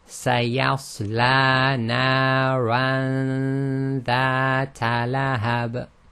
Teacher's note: So when the noon sakin is hidden, what actually happens is, so there's a few points. The noon is hidden in the nasal passage, a ghunna. You move directly to the articulation point of the next letter after the noon sakin.